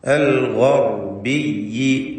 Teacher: ഗൈനിന് പൂർണ്ണമായ തഫ്ഖീം കൊടുക്കുക. ശേഷം റാ ഉണ്ട്, അതിനും തഫ്ഖീമാണ്.